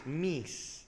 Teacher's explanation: the word mice, you write M-I-C-E, which was actually pronounced meese.